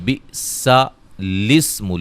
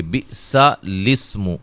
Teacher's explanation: یہ لام کو جو ہے وہ سین سے ملائیں گے